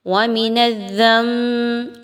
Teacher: آواز کو آپ میم کی آواز میں بدلیں گے, نون کی آواز کو, اور بغنہ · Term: اقلاب